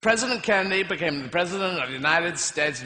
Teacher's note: notice how his voice moves back in his throat and down in his chest when he's imitating the American accent